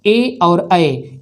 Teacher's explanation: कंठ और तालु को मिलाकर जिसका उच्चारण किया जाता है वे वर्ण हैं ए और ऐ। इन दोनों वर्णों का उच्चारण कंठ तालु से होता है।